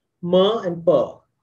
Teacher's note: labial consonants. That is the ones that are made with the lips only.